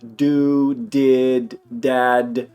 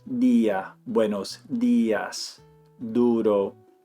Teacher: I put it up on the palate right above the teeth. In Spanish, that is not where they put the D when the D is a harder sound or it's starting the word.